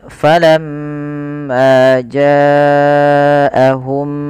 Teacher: ada gunnah di lafal mim dan wajib kita tahan dahulu sepanjang dua harokat. Maka kita tahan dulu suara mimnya ya dua harokat.